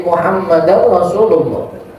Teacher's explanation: Sebagian mewajibkan hukum idghamnya di situ Muhammadan Rasulullah, bukan Muhammadan Rasulullah, bukan. Idgham min nun fi ra, masukin nunnya